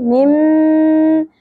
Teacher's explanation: میم مشددا غنہ کریں گے اواز کو ٹھہرائیں گے ناک میں تھوڑی دیر